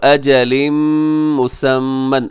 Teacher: اجل پہ تنوین کے بعد میم یہاں کیا ہو رہا ہے؟ ادغام ہو رہا ہے غنے کے ساتھ